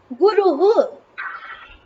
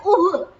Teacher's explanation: तो विसर्ग का स्थान यहाँ ओष्ठ हो जाएगा, क्योंकि उकार का उच्चारण स्थान ओष्ठ होता है ना?